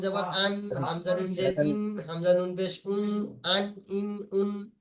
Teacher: জিভের আগা এবং সামনের উপরে ধারালো দাঁতের গড়ার সঙ্গে লাগিয়ে উচ্চারিত হয় নুন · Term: নুনের মাখরাজ